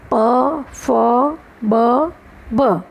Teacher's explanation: અને ઔષ્ઠ્ય વ્યંજનો. નીચલો હોઠ ઉપલા હોઠને સ્પર્શે.